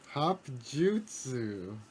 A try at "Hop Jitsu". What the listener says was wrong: jitsu, not jutsu like Naruto jutsu, but jitsu jujitsu,